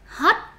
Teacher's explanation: Pronounce it with a rising tone.